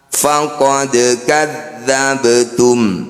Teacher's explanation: bunyi dal dan bunyi ba ini kita pantulkan tapi jangan berlebihan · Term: Qolqolah Sugro